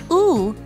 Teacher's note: said with the lips pushed out like you're trying to kiss someone and saying ooh